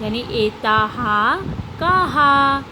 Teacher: यहाँ पे 2 विसर्ग दिख रहा है आपको, ये विसर्ग को हम हा का उच्चारण करेंगे, क्योंकि यहाँ पे ऑलरेडी आ स्वर तो है ता में, और विसर्ग का उच्चारण ह होता है, तो ह को हम उसके स्वर के साथ बोल देते हैं